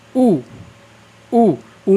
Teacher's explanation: ऊ में आप देखेंगे आपके होंठों की गोल आकृति बन जाएगी, तो वो हमारा किस में आ जाएगा, फिर व्रतमुखी में।